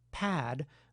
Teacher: the glottis has to start open in “pad”, and remain open just a bit longer than the gesture of bilabial closure lasts. This is what allows for a reasonable amount of voice onset time, during which air can rush out, the phenomenon we refer to as aspiration.